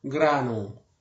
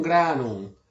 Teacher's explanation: Al final de palabra, la M es débil, casi una nasalización. Seguramente no se lee como si fuera una M seguida de un se va, lo que da el efecto contrario.